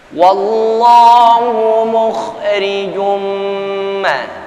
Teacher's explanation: Jim tanwin ketemu dengan huruf mim idgham bi ghunna. Tahan dulu 2 sampai 3 ketukan paling tidak.